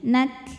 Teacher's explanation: ini kafnya Jadi sukun tapi jangan lupa ada Hnya jadi jangan lupa keluarin anginnya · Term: hamznya